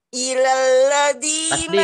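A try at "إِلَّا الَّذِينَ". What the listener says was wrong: Tasdid, izin ada tasdid Ibu.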